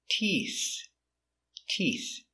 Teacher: we finish with the TH with the tongue touching the teeth, making the air.